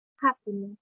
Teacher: has only 3 syllables, and the stress was in ha